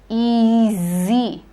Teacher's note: do this it is not e g but e zer z make sure your tongue is there on the teeth ridge and you're saying z with vibration